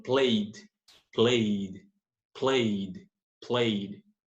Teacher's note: Aqui, se é voiced, a pronúncia do ed final vai ser o som de D, sem o E, sem pronunciar o E.